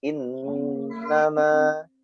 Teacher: nun yang bertasydid ditekan dan ditahan yang lama